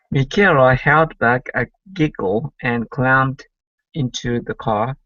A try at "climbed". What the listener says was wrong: Let's go to climbed instead of clumbed. I climbed. And climbed into the car.